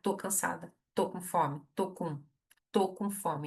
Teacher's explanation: Então já reduz o estou para tô e une com a palavra seguinte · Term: redução do estou para tô